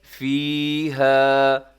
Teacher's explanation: فی اور ہا کو برابر لمبا کیجیے گا، کیونکہ فی میں یا مدہ ہے اور ہا میں الف مدہ ہے